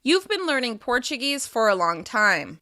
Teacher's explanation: I'm using falling intonation at the end of the sentence in order to signal that it's a neutral statement.